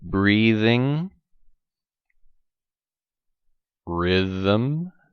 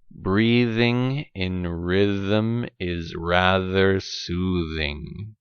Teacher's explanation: tip of tongue between teeth but add the vibration